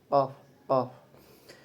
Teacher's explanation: Huruf qof dalam makhrajnya termasuk lahwi. Kemudian tariqatulnya termasuk infijari adanya gesekan.